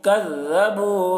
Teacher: کاف کو باریک پڑھیں گے، ذال کو بھی بہت ہی باریکی کے ساتھ ادا کریں گے